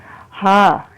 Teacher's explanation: ہا کو جب ہم نکالتے ہیں تو یہ ہم نیچے، بالکل نیچے والا جو حلق ہے سینے کی طرف، یہاں سے آواز نکالتے ہیں، اور سینے سے ہا، ہوا کا اس میں پریشر نہیں آئے گا، سیدھی سینے سے نکلے گی ہا، تو یہ آواز نکالیں گے۔